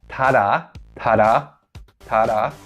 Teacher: you use the tip of your tongue against this alveolar Ridge to form this plosive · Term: alveolar plosive